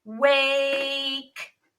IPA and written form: weɪk (wake)